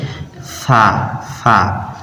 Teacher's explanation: সা হচ্ছে যে জিহ্বা, এখানে যে এই যে জিহ্বা আছে, আপনার দাঁতের আগা আর জিহ্বার আগার সঙ্গে লাগাবেন, তাহলে একটা নরম উচ্চারণ ভাব আসবে